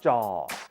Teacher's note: Jaw is a middle tone. It doesn't rise, it doesn't fall